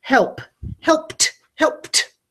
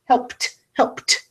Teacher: the ed past tense ending is making a T sound like Tom.